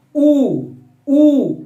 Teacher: वृत्तमुखी में उ गोलाकार हो रहा है ना